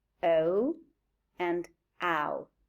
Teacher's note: we can see that they are closing diphthongs because the two sounds, the schwa and the a, move towards the U. So they move to a closing position. · they are falling diphthongs because the first element is pronounced with much more effort than the second element. We say the first element is longer and stronger than the second element, and the second element is weaker.